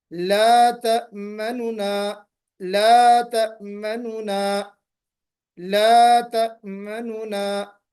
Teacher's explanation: منونا اس طرح بھی نہیں پڑھیں گے، مننا بھی نہیں پڑھیں گے، منونا پڑھیں گے. منونا آواز تھوڑی سی نیچے کر کے اور دوسرے والے نون کو کی آواز جو ہے بلند کر کے آپ پڑھیں گے، وہی روم کہلائے گا. · نون کی حرکت کا 1/3 حصہ 1/3 اس طرح ظاہر کر کے پڑھیں کہ قریب والے کو سننے سے معلوم ہو